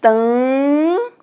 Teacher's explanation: esse M aqui, ele só vai nasalizar o A